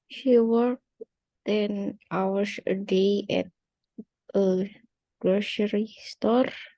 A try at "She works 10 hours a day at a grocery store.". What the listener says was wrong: Belum nyambung. Pelan-pelan kita sambung. She works 10 hours a day at a grocery store. S-nya. She works. Kalau dalam bahasa Inggris wajib bunyi akhiran S.